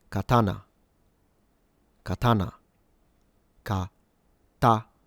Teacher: all syllables or mora are the same length. So you don't stress any of these. But for the advanced learners when it comes to the pitch accent, this is a low high low pattern. · this is a low high low pattern. These are called nakadaka patterns. And uh you start low T.